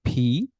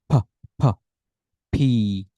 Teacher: দুই ঠোঁট একসাথে করে ধাক্কা দিয়ে বাতাসটা বের করবেন